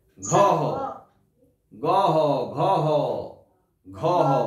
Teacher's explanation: হালকা ভাবে দেখো, মনে হচ্ছে একটা হ এলো শেষে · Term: দ্বি ব্যঞ্জন ধ্বনি